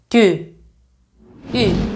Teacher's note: During the Byzantine period, the pronunciation of Ypsilon changed to a close front-rounded vowel, similar to the German U with umlaut or the French U in tu.